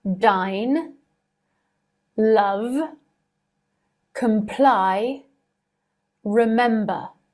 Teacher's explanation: when you produce that last phoneme, you can feel the vibrations in your throat. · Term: voiced consonant